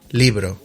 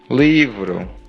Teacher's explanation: Spanish doesn't really have a v sound. It does have the soft b which kind of sounds similar to a v